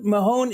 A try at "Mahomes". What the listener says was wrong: Mahomes. There's no N. There's no N. Mahomes.